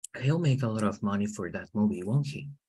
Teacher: the emphasis is not in the pronoun the emphasis is on the auxiliary verb